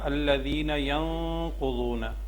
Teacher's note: نون ساکن کے بعد قاف ہے تو یہاں پہ ہم اخفا کریں گے · یہ دیکھیں یہاں پہ ہم نے پڑھا الذین ینقضون، ٹھیک ہے، ذین یہ یا ساکن ہے اور یا ساکن سے پہلے زیر ہے، حروف مدہ ہے تو اس کو لمبا کر کے پڑھیں گے الف کے برابر